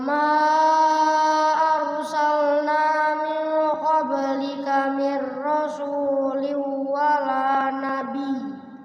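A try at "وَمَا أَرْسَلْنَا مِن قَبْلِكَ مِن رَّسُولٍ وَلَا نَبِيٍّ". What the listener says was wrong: iya, gunahnya idgham bi gunah kurang tuh. Rasuli wala nabi. Nah, kalau waqafnya begitu karena bertasydid ya.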